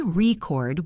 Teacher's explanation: if I say record with the stress on the second part, it is a verb. It is an action, like I want to record a video.